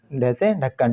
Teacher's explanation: ये महाप्राण व्यंजन भी है, महाप्राण वर्ण भी है, स्पर्श वर्ण भी है और मूर्धन्य वर्ण भी है।